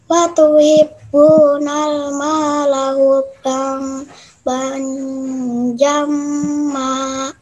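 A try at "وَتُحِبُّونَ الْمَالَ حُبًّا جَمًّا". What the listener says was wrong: Iya, hampir betul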